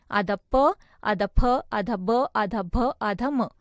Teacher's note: ओष्ठ्य यानी दोनों होठों से